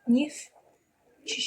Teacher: bir dənə T düşəcək. Yəni, yoxmuş kimi tələffüz olunacaq. Neftçi şəklində tələffüz olunacaqdır.